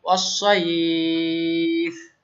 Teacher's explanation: এই সাইফটাকে এই লিনটাকে এখন টানতে হবে কারণ এটা মাদ লিন হয়ে গেছে, অসাইফ। ওকে, আবার বলেন আমার সাথে, ইলাফিহিম রিহলাতাশ শিতাই ওয়াস-সাইফি, না থেমে।